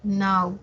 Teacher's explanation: Nau es la sílaba que tiene la mayor fuerza de voz, es la que tiene el acento, la tónica. En nau encontramos un diptongo decreciente, y como ya lo hemos dicho, en un diptongo siempre la mayor fuerza de voz la tiene la abierta.